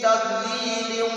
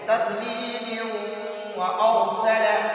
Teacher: یہ تنوین کے بعد واو آیا ہے تو ہم اس تنوین کو اس واو میں مرج کریں گے، ہم متصل پڑھیں گے. ہم اس تنوین کو واو میں داخل بھی کریں گے، ساتھ غنہ بھی پڑھیں گے